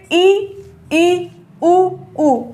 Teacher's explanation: इन्हें बोलने में हमें बहुत ज्यादा मुंह खोलने की आवश्यकता नहीं पड़ी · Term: संवृत